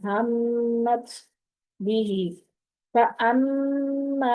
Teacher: तुम हमत भी, हमत भी, ता साकिन है तो ता साकिन को पढ़ने का मैंने तरीका बताया था कि आमतौर पर हम जब ता साकिन करते हैं तो उस पर कलकला हो जाता है, तो कलकले से बचने के लिए ता की आवाज को थ की आवाज के साथ पढ़ते हैं। यानी दो चश्मी हा अगर साथ लगी हो तो जिस तरीके से उसको पढ़ते हैं उस तरीके से साकिन वाली ता को पढ़ते हैं।